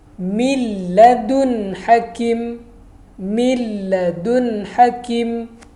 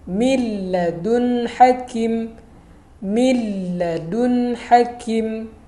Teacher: Nun mati bertemu dengan huruf lam, kita idghamkan nun tersebut kepada huruf lam, ke dalam huruf lam. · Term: idgham bila gunnah